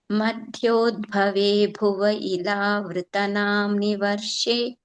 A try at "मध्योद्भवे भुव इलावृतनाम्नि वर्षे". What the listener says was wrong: Yeah, I didn't hear the dirgha, ila.